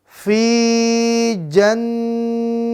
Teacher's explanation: Maka nun bertasydid dibaca dengung.